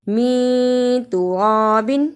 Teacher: ادا کرنے کا طریقہ نون ساکن کی آواز کو تھوڑی دیر ناک میں چھپانا ہے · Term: اخفا